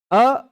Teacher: अ बोलने पर सीधे-सीधे कंठ से हवा आती है।